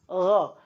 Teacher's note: Gha itu keluar dari tenggorokan yang bagian atas.